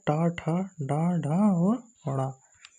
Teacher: अगला है टा वर्ग। टा वर्ग के अंतर्गत है टा, ठा, डा, ढा और अड़ा। इसका उच्चारण स्थान है मूर्धा।